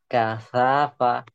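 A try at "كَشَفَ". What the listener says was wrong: kasyafa, shin, kasyafa,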